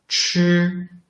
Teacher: when we pronounce 吃, it brings out more airflow. 吃 is pronounced, the tongue tip doesn't touch the heart palate, leaving a gap all along.